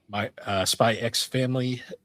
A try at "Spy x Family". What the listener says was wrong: Actually, you don't pronounce the X.